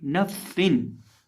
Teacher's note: सीन के अंदर सीटी की आवाज पैदा करके पढ़ेंगे